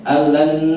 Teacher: nun mati ketemu lam itu idgham tapi tidak gunnah. Jadi tidak boleh al, tapi harus dua ketukan saja.